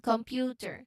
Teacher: The M often slightly changes or adapts to the P sound. Okay, you will feel your lips closing for the M and then releasing directly into the P for computer. Try computer, the word computer, feeling that smooth transition from the nasal M to the lip driven P. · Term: the MP cluster